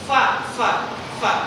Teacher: fa itu pengucapannya bukan bibir atas menyentuh dengan bibir bawah, tapi gigi seri atas disentuhkan ke bibir bawah.